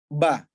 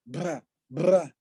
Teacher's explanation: Ba kan nggak boleh kita baca keluar udara. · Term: Al-jahar